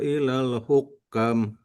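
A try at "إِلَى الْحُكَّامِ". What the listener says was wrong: Kurang panjang. Ilal hukami.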